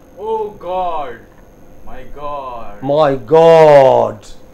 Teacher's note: Okay, stress on God, not on my.